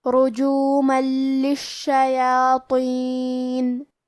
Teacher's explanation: کلمت رجومن میں کیونکہ را پہ پیش ہے لہذا ہم را کو موٹی آواز میں پڑھیں گے. آخری میں میم پہ تنوین زبر ہے. · لام حروف الادغام بغیر غنہ میں سے ہے اور ادغام کا معنی ہے حرف کو حرف میں داخل کرنا. تو ہم یہ تنوین کو لام میں ملا کے بغیر غنہ سے لیکن تشدید کے ساتھ یہ حکم کو ادا کریں گے · حرف شین کی تشدید کو ظاہر کریں گے اور 2 حرف کے برابر شین کو پڑھیں گے